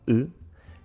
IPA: ɨ